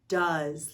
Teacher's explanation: the o e vowel team says ah like the letter u and the s makes the z sound